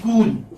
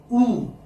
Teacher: this is a single sound ooh there's no change in it